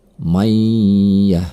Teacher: ada nun mati bertemu dengan huruf ya Ini juga Idgham Bighunnah cara membacanya nun mati tersebut melebur kepada huruf sesudahnya